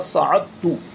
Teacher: اگر مدغم اور مدغم فی دونوں ہم جنس ہوں تو لکھنے میں ایک ہوتے ہیں اور پڑھنے میں دونوں آتے ہیں، اور اگر ہم جنس نہ ہوں تو لکھنے میں دونوں آتے ہیں اور پڑھنے میں صرف ایک آتا ہے، جیسے سعدتو، اصل میں سعدتو یہ ہے اور دال کو ظاہر نہیں کیا جاتا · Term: ادغام